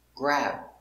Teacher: again this is a stop b we don't say boo it's just stop